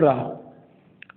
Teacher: रा एक प्रकार की लुंठित या प्रकंपित ध्वनि होती है